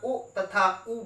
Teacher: उ तथा ऊ बोलते समय हमारे ओठ पास आ जाते हैं। उ तथा ऊ ओष्ठ श्रेणी में आ गए।